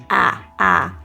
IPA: æ